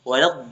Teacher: Adapun la di sini tidak dibaca panjang karena wasol.